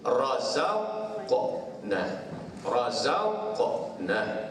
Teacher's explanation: Bila qalqalah ni ada bunyi lebihan, bila dia mati